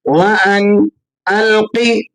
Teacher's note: قوف کو آپ نے یہاں پر کر کے ادا کرنا ہے اور بغیر قلقلے کے آپ نے اس کو پڑھنا ہے، کیونکہ حروف قلقلہ میں قوف اس وقت شمار ہوتا ہے جب یہ جزم کی حالت میں ہو.